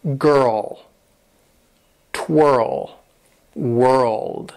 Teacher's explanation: you transition to the L, where your tongue is going to touch the top part right behind your front teeth.